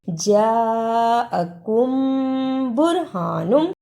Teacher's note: جیم پر زبر اور بڑی مد ہے، اس کو لمبا کرنا ہے. بڑی مد کو ادا کرنے کا طریقہ 4 بند انگلیاں باری باری کھولیں، اتنا لمبا کرنا ہے.